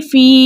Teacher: اس کے علاوہ یا ساکن سے پہلے کسی بھی حرف کے نیچے زیر ہو تو ایسی یا مدہ کہلاتی ہے. یا مدہ کو 2 حرکت کی مقدار کھینچ کر پڑھتے ہیں، اس لیے ہم پڑھیں گے فی.